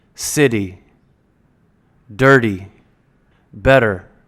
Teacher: the letter T is going to sound more like a D or how the D is pronounced between vowels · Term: flap T sound, the flap T sound